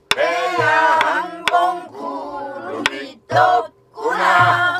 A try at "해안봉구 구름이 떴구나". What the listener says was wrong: 구가 안 높죠. 올라갔어 누가.